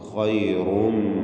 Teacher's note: ഖൈറും മിൻഹ, റായിനും തഫ്ഖീം കൊടുക്കണം. ഖൈറും, റായിന് തടിപ്പിച്ചുകൊണ്ടുള്ള ശബ്ദം കൊടുക്കുക.